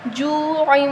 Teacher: واو مدہ ہے، یہاں واو سے پہلے کیا آ رہا ہے، پیش آ رہا ہے، تو ہم اس کو ایک الف کے برابر لمبا کریں گے